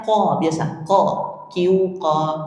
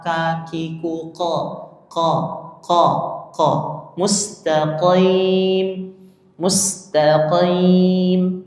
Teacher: Jadi bunyi asli atau makhrijun hurufnya huruf qof itu ada di pangkal lidah ya. Pangkal lidah naik menempel pada langit-langit mulut paling belakang dekat dengan tenggorokan.